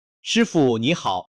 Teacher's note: 师傅2个字贴紧，傅读轻声，几乎听不到声调